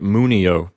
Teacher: the accent recedes one syllable to the left to the syllable mu